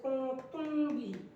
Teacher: میم ساکن کے بعد با ہے تو میم ساکن کا اخفاء ہوگا، یعنی اخفاء شفوی ہوگا